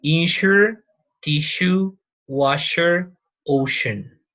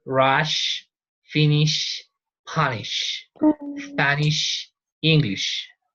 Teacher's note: Okay, so remember, this is fricative. It must be long, a little long. We don't have to exaggerate it, but it is long, a little long, okay?